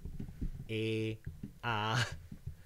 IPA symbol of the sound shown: e a